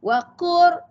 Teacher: Cumanya di sini huruf lam bertemu dengan ra. Jadinya lam tu tenggelam lah, hilang. · Waqur, nampak? Dia tak bunyi waqul, tak bunyi lam dah ya.